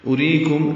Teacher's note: ری را باریک ہے، یا مدہ ہے، یہ کاف باریک ہے، میم ساکن پہ اظہار شفوی ہے.